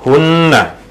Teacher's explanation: Nun dengan tasydid, nun dengan syaddah ataupun nun dengan sabdu, kita baca dengung dua harakat sama seperti mim musyaddadah.